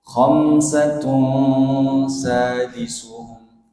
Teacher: Salasatur rabi'uhum, Yang kedua, khamsatun, khamsatun bertemu sin. Khamsatun jadinya ikhfa. Ikhfa bi gunnah. Khamsatun sadisuhum.